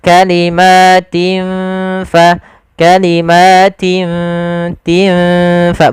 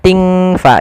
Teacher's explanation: ditandai dengan kasratain padafal tin bertemu dengan Fa cara membacanya adalah kita samarkan huruf tinnya kepada huruf ta seakan-akan kita langsung menghurufkan huruf Fa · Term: ikhfa